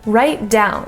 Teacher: we're going to combine the T into the D just go directly from right down